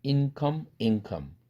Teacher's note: 응사운드로 은사운드 치경음이 바뀝니다.